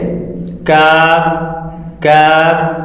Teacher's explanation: زبان کی جڑ کی انتہا اور اس کے مقابل اوپر کے تالو سے قاف کے مخرج سے ذرا منہ کی طرف ہٹ کر نرمی سے ادا ہوتا ہے